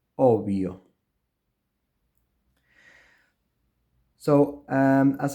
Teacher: But in Spanish, in the word obvio, the two consonants form one sound, which is the approximant sound